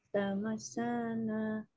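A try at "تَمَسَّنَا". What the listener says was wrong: Di sini ada tasdid. Tamassana.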